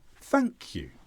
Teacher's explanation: with thank you never start low and go up always start high and go down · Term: lower intonation